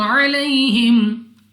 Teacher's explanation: یا ساکن سے پہلے زبر یا لین بغیر کھینچے بغیر جھٹکا دیے پڑیں گی، یعنی جلدی سے، اور وقف میں میم ساکن ہے تو ساکن حروف وقف میں تبدیل نہیں ہوتے۔